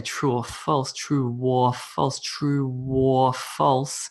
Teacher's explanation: you might actually hear a weird little W sound